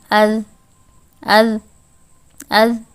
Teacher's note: ایک دم سے جو ہے یہ آواز رک رہی ہے، کنٹینیو نہیں ہے، نہ اس میں سے ایئر فلو جو ہے وہ پاس ہو رہا ہے۔ اذ، ایسے ہی حمزہ، وا زبر اوز، اوز، اوز، اور یہ حرف ادا کرتے وقت وائبریشن سی فیل ہوگی۔ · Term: حروف مجہورہ